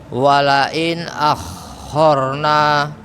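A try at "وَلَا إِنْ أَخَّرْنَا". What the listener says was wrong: Kepanjangan Pak. Wala in akharna.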